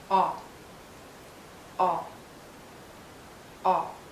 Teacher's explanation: It's a short sound and a very open and rounded sound. Make your lips rounded and lower your jaw.